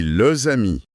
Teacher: Le S saute sur le mot d'après pour créer une nouvelle syllabe, za. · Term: la liaison